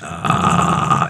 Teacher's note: that's what vocal fry is it's that ah in your voice